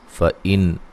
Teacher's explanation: نون ساکن کا یہاں اظہار ہے، غنہ نہیں کریں گے